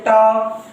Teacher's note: तालु और ऊपर के दांतों के पीछे का भाग जिसे जीभ पलट कर छूती है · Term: मूर्धा